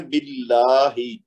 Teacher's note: تو اس کو پڑھنا ہے باللہ، یعنی لام کے اوپر جو تشدید ہے اس کو ڈبل کرنا ہے زور دے کے، 2 حرکت تک کھینچنا ہے، لیکن لام کو پڑھنا باریک ہے پہلے لام کو. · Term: لام جلالہ